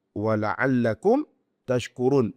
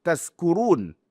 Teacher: Apabila lafaz taskurun yang menggunakan huruf syin ah yang menggunakan huruf syin itu berubah menjadi taskurun. Kita mengubah syin itu kepada sin.